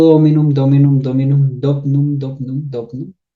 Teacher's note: Por asimilación tenemos dos consonantes nasales seguidas · Entonces, tenemos la palabra dueño, que evolucionó de la palabra dominum, pues en algún momento de la evolución de la palabra, de dominum, se nos cae esa I que está en posición débil, en sílaba no acentuada, porque es una I débil, es una I que no es larga.